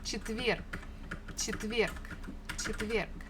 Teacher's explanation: the last letter is G, but we can easily pronounce it as K, just to make it a little bit easier for us for articulation.